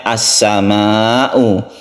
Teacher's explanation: As-sama'u ini adalah bacaan mad wajib muttasil, kita baca 2,5 alif panjangnya